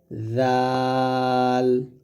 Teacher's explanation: জাল হবে জিহ্বা। উপরের দাঁতের আগে লাগবে। উপরের দুই দাঁতের আগায়।